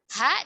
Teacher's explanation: mengalir udah udara ya mengalir nafas ini contoh dalam keadaan sukun ada aliran udara karena pita suaranya terbuka